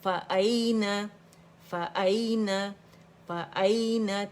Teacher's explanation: آپ کی آواز آنی چاہیے آپ کے حمزہ کی تھروٹ سے آنی چاہیے، فار تھروٹ سے، اقص الحلق سے